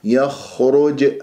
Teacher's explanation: الخاء مفخمه والخاء ساكنه · خطأ ومن يخرج هكذا غنى بالخيشوم فانتبهوا الياء مرققة الخاء مفخمة والخاء ساكنة يجري فيها صوت والنفس مفخمة مرتبة رابعة ولا تقول يخ هكذا شخير في الخاء وتكون في الخاء الساكنة